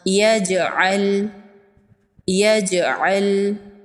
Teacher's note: جیم حروف قلقلہ میں سے ہے، جیم ساکن ہے، جیم پر قلقلہ ہوگا۔